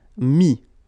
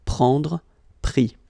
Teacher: Mettre, E-T-T-R-E, will become I-S. Final S not pronounced